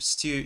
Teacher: stew is an odd one because it has the Y sound as well depending on where you're from